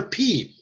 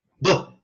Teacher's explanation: You have P, put a voice in it, you got a B. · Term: voiced